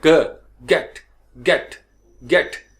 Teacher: यानी ग, ग, जबान पीछे से वो पिछला हिस्सा जो है उसका ऊपर उठता है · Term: ग की साउंड